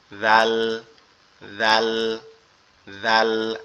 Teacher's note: জিহ্বার আগা উপরের দুই দাঁতের আগার সঙ্গে লাগবে, এই যে এইখানটাতে আগার সঙ্গে লেগে নরম আওয়াজ হবে জাল জাল জাল